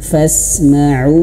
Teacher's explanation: Kemudian fasma'un, dan huruf nun di sini harus dialirkan sedikit karena huruf nun ini dia memiliki sifat tawassud ya, dia mengalir sedikit.